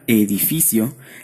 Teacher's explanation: en la palabra edificio, la sílaba fi es la que lleva el acento prosódico, ya que requiere una intensidad mayor para pronunciar dicha sílaba.